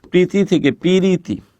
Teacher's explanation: একটা অতিরিক্ত ই আসছে মাঝখানে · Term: মধ্যের সরাগম